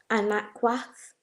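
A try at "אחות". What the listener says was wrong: Okay, so anakwath would be a different, I don't know if that's a different word, but there's no na. There's no na in the word sister. It'd be aquath. So to say sister, it would be aquath, right? So you have ak, which means brother, and basically the feminine of that is aquath. So the wath at the end of ak means sister.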